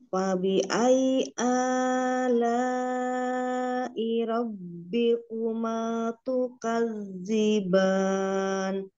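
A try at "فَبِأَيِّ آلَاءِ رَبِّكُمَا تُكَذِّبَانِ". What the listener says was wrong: Insya Allah sudah bagus, tinggal A, jangan kepanjangan ya. Disamakan.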